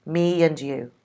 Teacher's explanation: Instead of saying me and you, we'd have the intrusive y sound to help us.